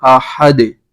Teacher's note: دال جو ہے حروف قلقلہ میں سے ہے تو یہاں پر قلقلہ ہوگا